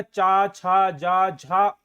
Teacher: यह तालु से बोला जाता है। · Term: चा वर्ग